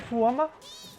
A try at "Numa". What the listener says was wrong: It's Numa. That's an N.